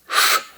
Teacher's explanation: La sh se pronuncia con la punta de la lengua curvada hacia atrás